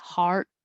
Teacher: So your tongue should be lower, your jaw should be more open, heart. And I won't say the T, heart. I'll put my tongue in the T position.